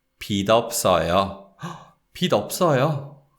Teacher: So the 지읒 받침, the final consonant, that sound, it doesn't get linked. It's actually the sound of 티귿 that links with the following syllable, because the following word is the whole adjective 없어요.